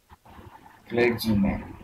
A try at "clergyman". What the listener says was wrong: Yeah, and we say it's a j sound, not a g. So clergy, clergyman.